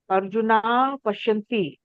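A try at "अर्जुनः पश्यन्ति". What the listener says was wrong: Arjunaha Visarga.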